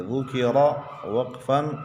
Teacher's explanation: را وقف میں باریک پڑھیں گے کیونکہ را ساکن سے پہلے زبر ہے